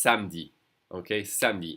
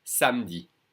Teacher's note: And the E is really not pronounced at all.